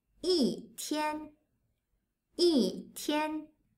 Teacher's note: It's not an ordinal number, so the tone of 一 changes from the first tone to the fourth tone.